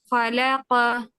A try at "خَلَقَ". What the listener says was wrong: خو، خو کو ہیوی کریں، خو، خالی بولیں، خو، خا نہیں، آپ کی زبان فلیٹ ہے، آپ بولیں او، او،